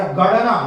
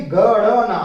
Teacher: ये नासिका से उच्चारण होता है क्योंकि पंचमाक्षर है, आप जानते हैं ट ठ ड ढ अण, ट वर्ग का पांचवा अक्षर है, और जो वर्ग के पांचवें अक्षर होते हैं वो नासिका से उच्चारण उनका किया जाता है।